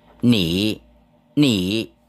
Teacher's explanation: đó là xuống rồi lên, nị, nị là you, tức là anh, là chị, cô bác gì đó, miễn là ngôi thứ hai thì chúng ta gọi là nị.